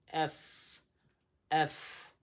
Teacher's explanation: এফ এর উচ্চারণ হবে এই উপরের দাঁত নিচের ঠোঁটের সঙ্গে লাগতে হবে।